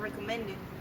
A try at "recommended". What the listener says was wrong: On the end of recommended, make the ED sound louder.